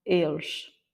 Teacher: Quand on le raccourcit vraiment, on arrive à ce point où on prononce pas du tout le E à la fin.